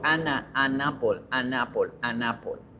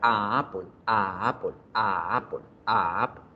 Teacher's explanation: se siente la pequeña obstrucción que hago para diferenciar la A inicial de la A de la palabra · Se debe decir an apple, an apple. Yo pego la consonante con la siguiente vocal y genero una fluidez total.